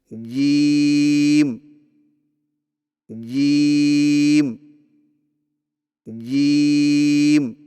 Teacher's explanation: जुबान के दरमियान को तालू के साथ सख्ती से लगाकर बारीक आवाज में पढ़े · جیم کی ادائیگی میں زبان کے درمیان کو تالو کے ساتھ سختی سے لگا کر باریک آواز میں پڑھیں